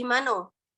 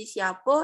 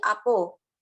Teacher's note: dialek Petalangan ini memiliki ciri khas mereka mengucapkan selalu berakhiran huruf O.